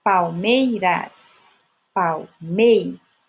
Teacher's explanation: Mei é a última sílaba forte.